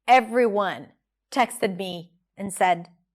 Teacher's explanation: Everyone, it's a little slow, texted me, slow again, and said, quickly, you made it. Slowly and higher in pitch. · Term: rhythm